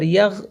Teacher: یا غین زبر یغ، اس میں قلقلہ نہیں کریں گے